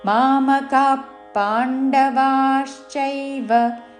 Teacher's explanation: మామకాః పాండ విసర్గ తర్వాత పాతో పదం మొదలైనది కాబట్టి శ్వాస వదులుతూ ఫ లాగా ఉచ్చారణ చేస్తూ